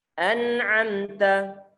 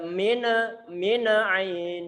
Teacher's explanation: Karena huruf nun bukanlah termasuk huruf qalqalah. Sehingga dia tidak berhak untuk dipantulkan. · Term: izhar